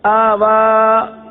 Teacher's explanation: پہلے حمزہ کو نہیں کھینچا, پہلا حمزہ وہ نہیں کھینچا گیا اور واو کو کھینچ دیا, حالانکہ دونوں کھڑا زبر ہے, دونوں کو ایک الف تک کھینچ کر پڑھیں گے.